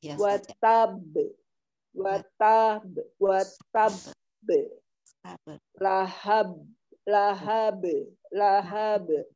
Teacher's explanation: Jadi di ada temponya. Ini qalqalah akbar. Jadi dikatakan dulu baru dipantulkan.